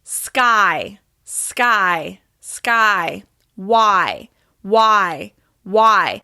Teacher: My mouth is opening into that y shape at the end of the diphthong